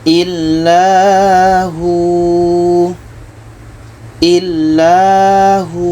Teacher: Hu ini dibaca panjang karena ada waw mati sebelumnya baris depan.